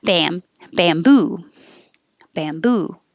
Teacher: bam will always stay bam it won't change to bum